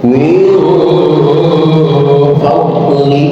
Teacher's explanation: Min fadlihi berarti ketemu lupa ini ikhfanya ikhfa ausat, suaranya bukan suara ang, bukan min fadli, dan juga bukan suara n min fadli, tapi suara m min fadli. Fadli donnya bukan huruf qalqalah, mohon jangan dikolkolahkan, bacalah tanpa pantulan qalqalah, min fadli.